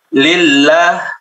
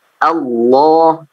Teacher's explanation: Dan karena suara dia ke bawah suaranya. Ya, suara ke bawah, tidak ke atas, tidak terangkat. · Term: tipis